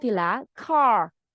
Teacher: Đó là cách phát âm chuẩn, mình bật chữ K. Cái K của tiếng Anh thì lại khác tiếng Việt, nó lại là âm bật ra